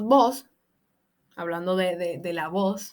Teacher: la neutralización de la distinción entre B y V